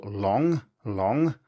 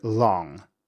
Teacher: There are many speakers of English, in the US for example, that pronounces this with a much more open vowel, more like long.